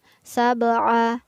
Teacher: Kemudian pada lafaz sab'a, jangan lupa ya, di sini berlaku hukum bacaan qalqalah. Huruf ba-nya, ba sukunnya harus dibaca memantul.